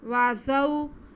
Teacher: वाव पे ज़बर, ज़ा पे भी ज़बर और साथ में वाव साकिन। वाव साकिन से पहले ज़बर हो तो ये वाव लीन होती है, इसको बिल्कुल नहीं खींचते